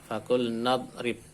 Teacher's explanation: Ini hamzah wasol, karena depan ada kata, maka hamzah wasolnya tidak dibaca.